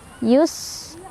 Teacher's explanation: Dan dia punya sifat sofir, ada desisan ri-nya dibaca secara tarqiq karena ro-nya berbaris di bawah atau kasrah, dibacanya tipis. Yus ada hamas dan ada sofir, ada angin keluar dan ada desisan ya.